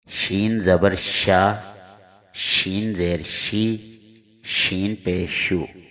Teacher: صرف ایک ہی حرف شین کے اندر صفت تفشی پائی جاتی ہے. شین کو ادا کرتے وقت اس کے مخرج سے نکلنے کے بعد پورے منہ میں آواز پھیل جاتی ہے. یعنی آواز کو پھیلائے بغیر شین ادا نہیں ہوگا.